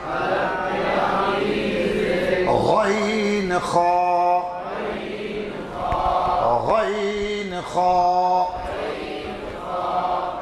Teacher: हलक के आखिर से गैन खा